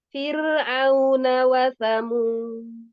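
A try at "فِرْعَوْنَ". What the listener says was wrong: Fir'au, Fir'auna. Ain masih ada suara lain. Fir'auna enggak? Fir'au, Fir'auna.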